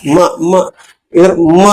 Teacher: ಮಮ ಜೊತೆಗೆ ಮೂಗು ಕೂಡ ತರಂಗವನ್ನು ಸೃಷ್ಟಿ ಮಾಡುತ್ತೆ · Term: ಮೂಗಿನ ತರಂಗ